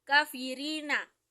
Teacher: Artinya kita menipiskan bacaan ketika membaca kafirina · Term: rotarix